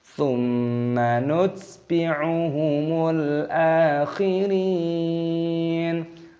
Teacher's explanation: Tsumma mim tasdid hukumnya dibaca gunnah ataupun berdengung, didengungkan. Tsumma nutbi'uhumul, taknya berharokat sukun, dimatikan, dibaca nutbi'uhumul.